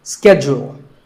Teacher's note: In American English, this is schedule. The first syllable is ske and the second is jewel. Schedule. In British English, it can be both schedule or schedule.